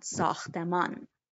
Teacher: ساختمان changes its final syllable from on into un in spoken form.